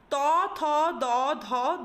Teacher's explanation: জিহ্বার অগ্রভাগ এসে দন্তকে স্পর্শ করছে। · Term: দন্ত ব্যঞ্জন